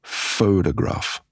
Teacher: Strong syllable. Weak syllable. Weak syllable. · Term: stress patterns